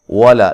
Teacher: لام کو باریک پڑھنا ہے، موٹا نہیں کرنا